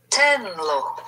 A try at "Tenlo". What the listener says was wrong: Right, tenlo, yes.